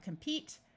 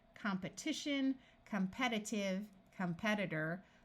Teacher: notice that when we start adding suffixes to the root compete this long e becomes a short e sound